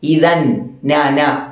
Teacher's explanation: നാവിന്റെ അറ്റം മേലെ അണ്ണാക്കിൽ മുട്ടിക്കുക. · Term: നൂനിന്റെ മഖ്റജ്